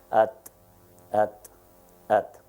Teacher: there is no vibration on my cheek when I articulate the, at.